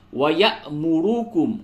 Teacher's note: یہ حقیقت میں حمزہ ہے کیونکہ اس کے اوپر جزم بنا ہوا ہے تو یہاں پہ جھٹکا ہوگا